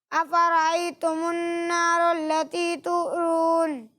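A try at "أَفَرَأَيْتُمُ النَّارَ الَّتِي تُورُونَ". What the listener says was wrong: अच्छी कोशिश की आपने, लेकिन बेटा यहाँ पर आप देखें वाव मद्दा हो रहा है ना, तो उरून ये गलत हो जाएगा, ठीक है। तूरून, ठीक है।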